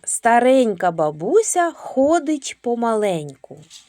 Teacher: В слові старенька звук Нь м'який, приголосний.